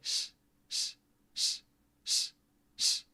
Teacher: In Polish, SI or S with an accent is a soft palletized sound like the sh in sheet, but with the tongue near the front teeth. The tongue near the front teeth almost smiling.